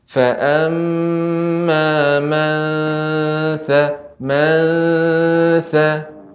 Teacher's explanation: Amma man faqulat mawazinu. Ya Ibu, nun sukun bertemu dengan sa, ya itu ikhfa. Maka lebih ditampakkan ikhfanya.